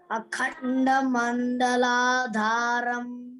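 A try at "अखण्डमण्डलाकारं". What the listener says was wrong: Not Dharam. Mandalakaram. K-A, it is given, no? K-A-R-A-M. Karam. Mandalakaram. Akhanda Mandalakaram.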